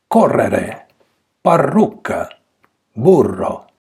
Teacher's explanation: when you have a double R, then you pronounce 2 taps.